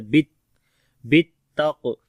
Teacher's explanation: او امارا بالتقوی، با کو تا کے ساتھ تھوڑا سخت کر کے پڑھیں گے کیونکہ تا کے اوپر شد ہے، تو شد والا حرف جو ہوتا ہے تھوڑا جماؤ کے ساتھ پڑھا جاتا ہے، بالتقوی۔ اور کاف کو موٹا پڑھیں گے اور یہاں پر کلکلہ بھی کریں گے جو کہ کمزور کلکلہ ہوگا، اور واو کو لمبا کریں گے، کھڑی زبر ہے یہاں پر، جب رکیں گے تب بھی وا ہی پڑھا جائے گا اور جب ملا کر پڑھیں گے تب بھی وا پڑھا جائے گا، ٹھیک ہے، یعنی یہاں پر کوئی چینجنگ نہیں ہوگی جب رکیں گے۔